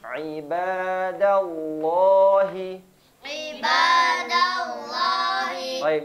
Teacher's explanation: Ain Di mana makhrajnya tengah tenggorokan bagian tengah